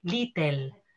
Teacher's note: la pronunciación hispanohablante de la lateral l cuando es núcleo silábico en lengua inglesa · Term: vocal epentetica